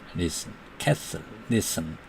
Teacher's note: 예를 들면 castle, castle, T가 완전히 소리가 안 나죠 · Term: silent T